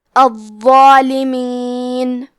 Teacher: حرف الضو پہ تشدید ہے تو ہمیں 2 حرف کے برابر ضو کو پڑھنا ہے